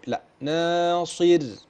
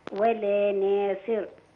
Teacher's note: تترقق برضو الراء لأنها سكنت لأجل وقف وقبلها كسر